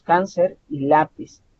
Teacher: Bueno, como sigue, las sílabas graves, las palabras graves, la mayor elevación de voz se produce en la penúltima sílaba